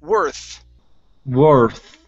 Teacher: make sure that you're you're using your tongue between your teeth instead of pronouncing an F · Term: th sound